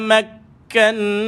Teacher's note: Ada sabdu pada ka, tahan dan lepaskan ka. Nun ada sabdu wajibal gunnah tuan-puan.